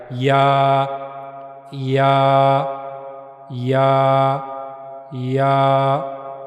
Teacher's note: या को अदा करने के लिए मुंह का ऊपर वाला हिस्सा यह मुंह का ऊपर वाला हिस्सा है और जबान का दरमियानी हिस्सा जबान का दरमियानी हिस्सा ये जो जबान का दरमियानी हिस्सा है, यह मुंह के ऊपर वाले हिस्से की तरफ उठेगा। उससे मिलेगा नहीं, लेकिन उसकी तरफ उठेगा और वहां से या अदा किया जाएगा। · یا کو ادا کرنے کے لیے منہ کا اوپر والا حصہ، یہ منہ کا اوپر والا حصہ ہے، اور زبان کا درمیانی حصہ، زبان کا درمیانی حصہ، یہ جو زبان کا درمیانی حصہ ہے یہ منہ کے اوپر والے حصے کی طرف اٹھے گا، اس سے ملے گا نہیں لیکن اس کی طرف اٹھے گا اور وہاں سے یا ادا کیا جائے گا۔